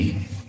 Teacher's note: मूर्धन्य से यानी मुंह के भीतरी भाग से जिस स्वरों का उच्चारण होता है वह है री। देखो री, मुंह के भीतरी भाग से।